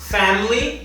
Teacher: o schwa, nesse caso, está no I da palavra e não no fam, que seria a sílaba tônica, a sílaba mais forte da palavra.